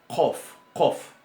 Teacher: Ese sonido es como una letra C, pero que se pronuncia un poco más atrás, en la úvula. O en la parte detrás del paladar blando.